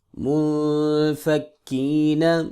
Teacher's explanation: میم پیش نون مو، فا زبر کفک، منفک، کف زیر یا کی، منفکی، نون زبرنا، منفکین، نون ساکن ہے، یہاں پہ اخفا ہوگا، کف زیر یا کی، یہاں پہ مدہ ہوگا۔